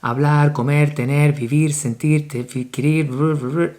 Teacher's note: verbs in the infinitive, hablar, they have the strong syllable at the end, always.